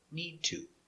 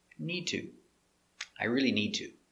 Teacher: need to sounds together pronounced like one word